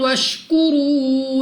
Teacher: واو ساکن سے پہلے پیش واو مدہ 2 سیکنڈ تک کھینچ کر لمبا کر کے پڑھنا ہوگا